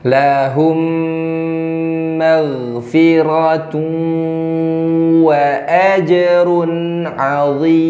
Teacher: jadi ketika mim sukun bertemu dengan mim ini ditahan. Nah, ini nggak terlalu sulit karena di mim berikutnya ada tanda bantu tasydid.